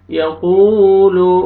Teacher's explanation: قاف موٹا پڑھیں گے اور واو مد ہے ، واو ساکن سے پہلے ضمہ، قاف کو اپنے کھینچنا ہے،